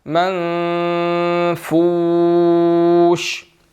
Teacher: من نون مشدد نہیں ہے بلکہ نون ساکن ہے، تو یہاں پر اخفا ہوگا